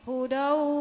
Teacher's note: Jadi idgham bigunah itu adanya di liang hidung kita nih.